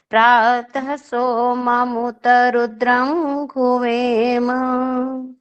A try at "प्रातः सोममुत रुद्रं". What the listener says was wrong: सिर्फ एक जगह पर प्रातः सोममुत बोला है ना, जो वहाँ प्रातः वहाँ संधि हो सकती है तो संधि सहित बोलते हैं।